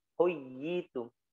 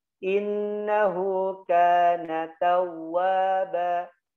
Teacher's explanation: huruf waw dalam keadaan tasydid tidak boleh ditahan, ya dia cepat bacanya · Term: waw bertasydid